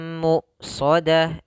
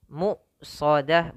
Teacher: Ketika hamzah ini mati itu nafasnya tertahan ya.